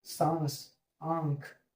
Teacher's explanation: मुख और नाक दोनों की सहायता से बोला जा रहा है · आपके नाक की भी सहारा लिया जा रहा है और आपके मुंह का भी सहारा सहारा लिया जा रहा है। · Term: अनुनासिक